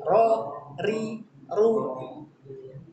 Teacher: Getaran itu hanya 1-2 kali. R, R, R. Getaran ininya nih, pengulangannya hanya 1-2 kali. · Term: takrir